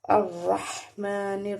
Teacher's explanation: را کے اوپر زبر ہے اس لیے را کو ہم نے پر پڑھنا ہے